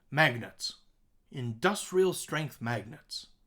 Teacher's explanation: our beat pattern strong weak weak strong weak strong strong weak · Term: stressed and unstressed syllables